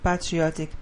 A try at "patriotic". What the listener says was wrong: Not bad. Now I would say not patri, but patriotic.